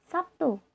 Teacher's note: Contoh, kata Sabtu dalam bahasa Indonesia lazim diucapkan Sabtu. Terlihat bunyi B berubah menjadi bunyi P sebagai akibat dari pengaruh bunyi T. Perubahan tersebut merupakan jenis asimilasi fonemis, namun demikian, asimilasi fonemis hanya berlaku untuk bahasa tertentu.